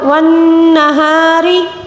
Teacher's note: را کو باریک پڑھیں گے کیونکہ را کے نیچے زیر ہے